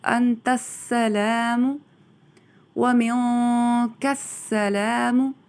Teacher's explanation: تا کو سین کے ساتھ ملا دیا جائے گا اور پھر ادا کیا جائے گا انت السلام ومنک السلام تبارکت،